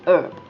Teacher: we drop the h and you can just say herb